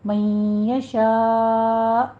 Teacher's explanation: حمزہ ساکن ہو جائے گا، جس پر آپ نے جھٹکے کے ساتھ وقف کرنا ہے، لیکن قلقلہ نہیں کرنا